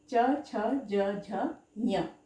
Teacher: इनका उच्चारण तालु से किया जाता है। इन्हें अंग्रेजी में पैलेटल्स भी कहते हैं। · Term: तालव्य वर्ण